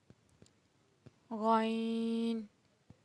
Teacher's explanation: حلق کے شروع کے حصے سے جو منہ کی طرف ہے ادا ہوتا ہے غین